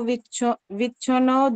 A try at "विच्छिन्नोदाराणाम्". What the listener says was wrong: विच्छो क्यों बोल रहे हो? विच्छी बोलो ना, विच्छिन्न विच्छिन्नो